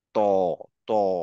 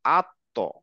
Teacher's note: আমার জীবটা দেখেন দাঁতের ঠিক ওই গোড়ায় লাগছে এবং এই যেহেতু মুখটা আমি গোল করছি যার জন্য জীভের পিছনের পার্টটা এরকম গোল হয়ে উঁচু হয়ে যাচ্ছে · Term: রাউন্ড মাউথ